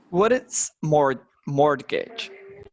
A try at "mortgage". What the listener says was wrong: Mortgage, you don't pronounce the T, mortgage.